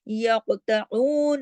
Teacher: قاف کو موٹا بھی پڑھنا ہے اور کلکلا بھی کرنا ہے